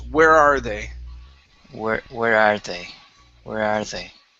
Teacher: But we're actually emphasizing that word are.